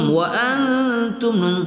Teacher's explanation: nun sukun bertemu ta ikhfa Hakiki kita dengungkan